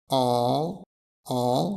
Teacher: la position de la langue elle est basse et elle est massée dans le fond de la bouche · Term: son nasal